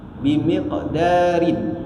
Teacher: Jadi ini qalqalah sughra. Jadi qalqalah sughra ni dibaca dengan lantunan yang tak kuat daripada qalqalah nanti qalqalah kubra